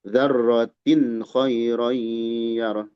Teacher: Tanwin menghadapi kha tidak ditahan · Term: izhar